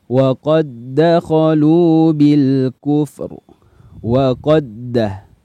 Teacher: Ini huruf dal yang pertama masuk ke huruf da yang kedua, sifat qalqalahnya dihilangkan.